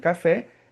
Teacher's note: café é uma oxítona terminada em e como esse é mais aberto, eu acentuo para saber que não é café, é café, né?